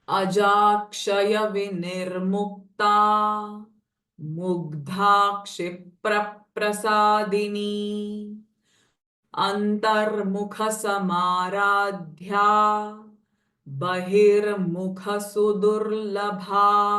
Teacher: So here the sound kh, dha and bha, these are the Mahaprana sounds.